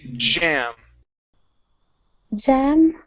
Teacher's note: you need to use your vocal cords here. Okay? And your tongue needs to come up to the top of your mouth. Okay? So, it comes here and then it releases just a little bit so it vibrates. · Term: the J